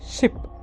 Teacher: പെലറ്റോ അൽവിയോള, tip of the tongue and teeth rich are involved. Fricative, air passes through the narrow space between them.